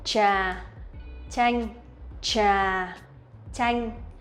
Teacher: They are a little bit different, slightly different. Trà TR is a little bit stronger, and the CH one, it's softer and it's lighter.